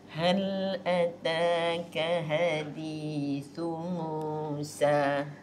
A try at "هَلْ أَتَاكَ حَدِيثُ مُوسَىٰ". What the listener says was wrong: حرف حاء dalam lagi.